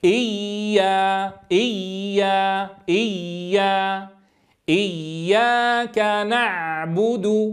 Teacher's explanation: العين يخرج من وسط الحلق. العامل الأساسي في ضبطه هو رجوع لسان المزمار إلى الخلف، فلا بد من التحكم بهذه الكيفية. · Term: مخرج العين